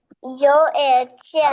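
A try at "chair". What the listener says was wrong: আরে জ না চ, তুমি শুনতেছো কম কেন আজকে? চ এয়ার চেয়ার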